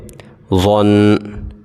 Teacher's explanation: اپنی زبان کی نوک کو وہاں پہ لگانا ہے جہاں پہ ہم نے ذال اور ثا کے وقت لگایا تھا، اور ضا کو موٹا پڑھیں گے